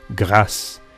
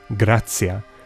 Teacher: that tia eventually becomes a s in French, grâce, ts in Italian, grazia, and th in Spanish, gracia. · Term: palatalization